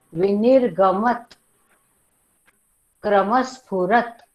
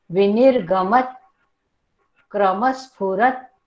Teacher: वरच्या दाताच्या मागच्या बाजूला आपली जीभ टेकते. ती क्षणभर जर तिथे ठेवली तर तुमचा उच्चार हलंत बरोबर येतो.